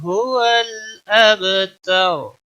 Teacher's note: अब बा साकिन है, इस पर कलकला होगा। हरूफ कलकला 5 हैं, क़ाफ, ता, बा, जीम, दाल।